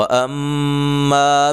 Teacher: मीम मुशद्दद पे गुन्ना ज़रूरी है